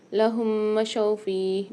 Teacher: میم ساکن کے بعد دیکھیے دوسری میم مشدد آ رہی ہے تو یہاں پر ہم غنہ کر کے پڑھیں گے دونوں کو ملا کے۔